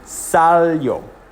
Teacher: So you count 1, 2, accent would be on the A, and you would say salió. The I-O making like a Y-O sound.